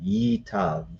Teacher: So what happens here is that the shva here disappears, becomes Itav. This becomes one long E sound, Yitav.